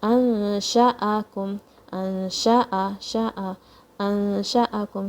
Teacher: Remember ikhfa, when you don't touch the tongue from the makhraj, but you have to say the gunna, and the noon sound is going to hide in your nose.